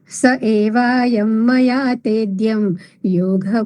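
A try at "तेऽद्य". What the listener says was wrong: તેદ્યમ નથી, તેદ્ય. તેદ્યમ નથી, અનુસ્વાર નથી ને, દ્ય.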